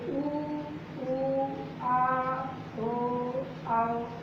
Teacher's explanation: जब ओ आओ बोलते तो पता चल जाता है कि पीछे से निकला है, ये स्पष्ट स्वर है।